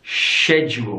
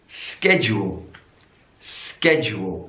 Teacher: In British English, schedule. We have the sh sound there.